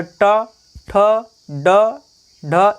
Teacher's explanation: मूर्धा का तात्पर्य है जब हम लोग बोलते हैं तो जीभ पलट कर जो ऊपरी भाग में जहाँ छूती है वही है मूर्धा, यानी कहा जाए ट, ठ, ड, ढ, इस प्रकार से वह मूर्धा है।